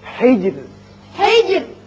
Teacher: یہاں را جب ساکن ہو جائے گا چونکہ پیچھے زیر ہے اس لیے یہاں باریک رہے گا